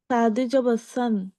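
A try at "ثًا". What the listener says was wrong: আপুর সা উচ্চারণটা আরো সুন্দর হবে। হ্যাঁ, আরো পাতলা হবে। সান এরকম উচ্চারণটা হলে সিন চলে হয়ে যাবে, সেটা সা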